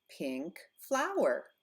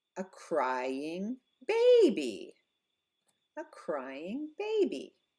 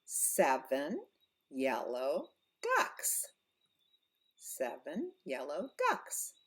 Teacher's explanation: the rule for adjectives plus nouns is we stress the second word we stress the noun